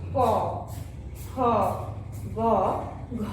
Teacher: তাহলে উচ্চারণ আমাদের এই কণ্ঠ বা জিহ্বমূল স্পর্শ করে এগুলো উচ্চারিত হয়েছে। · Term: কণ্ঠ বা জিহ্বমূলীয় বর্ণ